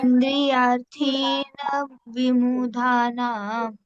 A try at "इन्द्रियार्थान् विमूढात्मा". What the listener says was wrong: ये देखो इंद्रियार्थान, ए के ऊपर डैश है, आ बन गया। तो इंद्रियार्थान, फिर विमूढ़, डी के नीचे डॉट है तो ड का ढ बन गया।